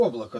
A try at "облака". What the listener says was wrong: Это облака не светлые. Все время ударение как-то путаешься.